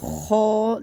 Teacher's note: خو کو خرخر کی آواز آئے گی. خو جیسے خراٹے لیتے ہیں.